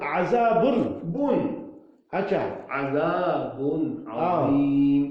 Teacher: اظہار اس کو کہتے ہیں ناک پہ آواز جانے کا خیال ہی بند کرنا